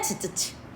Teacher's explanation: 막았다가 터트리면서 마찰도 같이 나는 파차름